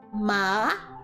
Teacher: a flat tone where you literally just stay on one line the second tone you have to go up as if you're raising your voice a bit